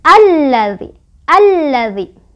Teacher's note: lam yang pertama itu nggak dibaca, langsung baca ke lam yang kedua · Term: alif lam syamsiah